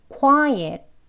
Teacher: 어와 의의 중간 소리입니다. 시작은 어로 하는데요. 입을 거의 벌리지 않아 의 소리가 같이 들어가 있어요. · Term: 슈아 발음